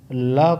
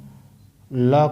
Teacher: पार्श्व शब्द का शाब्दिक अर्थ होता है बगल, अर्थात जिस व्यंजन का उच्चारण करते समय वायु, मतलब श्वास वायु जीभ के दोनों बगल से, जीभ के दोनों तरफ से बाहर निकल जाती है, वो पार्श्विक व्यंजन कहलाते हैं।